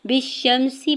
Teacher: با کی زیر کو شین مشدد کے ساتھ ملاتے ہوئے پڑھیں گے اور شین کے زبر کو میم ساکن کے ساتھ ملائیں گے. سین کی زیر کو بغیر کھینچے ہوئے ادا کریں گے.